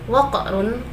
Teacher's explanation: qaf di sini bacaan qalqalah sughra sebab matinya asli ataupun bukan karena waqaf